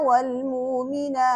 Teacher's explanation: वल मुमिनात वक्फन जो इन्होंने हमजा को वाव से तब्दील किया, ये वक्फन तब्दील होगा